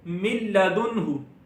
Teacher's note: لام یہاں پر آ گیا تو نون ساکن میں گنہ نہیں ہوگا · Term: ادغام